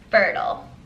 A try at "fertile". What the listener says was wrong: Fertile. There's no I in yours. That just sounds like F-E-R-T-L-E.